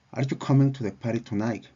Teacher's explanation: En este ejemplo, la entonación ascendente se manifiesta en la palabra tonight